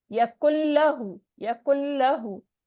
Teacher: और यहाँ पर यकुल लहू, ठीक है, यहाँ पे जो क्योंकि आगे तशदीद आ रही है लाम के ऊपर, तो काफ जो है वो लाम के साथ मिल जाएगा, नून को हम नहीं पढ़ेंगे, ठीक है। यकुल्लहु, यकुल्लहु, नून की आवाज नहीं आएगी। और उल्टा पेश है, उल्टा पेश भी मद होती है, वो 2 काउंट स्ट्रेच हो गए।